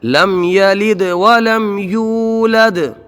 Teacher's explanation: واو میں مدہ، یولد ایک الف کھینچ کے